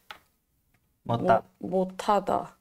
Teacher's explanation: It becomes that aspirated T sound